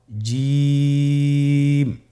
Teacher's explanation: এর মাখরাজ হলো জিহ্বার মধ্যখান, তার বরাবর উপরের তালুর সঙ্গে লাগিয়ে উচ্চারিত হয়।